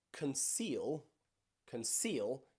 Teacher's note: it is still pronounced as a s not a shh